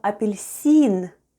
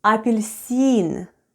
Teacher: so we have le then we have e and n and all together we have apilicin with the stress on the last syllable